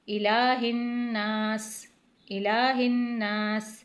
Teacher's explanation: اس ہا کو سینے سے ادا کرنا ہے، یہاں پہ غنہ کرنا ہے، الہ الناس، الہ الناس۔